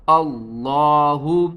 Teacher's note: اللہ، حمزہ لام زبر اللام کھڑا زبر لا، ہا پیش ہو، اللہ۔ لفظ اللہ سے پہلے زبر ہے تو ہم لفظ اللہ کو موٹا کر کے پڑھیں گے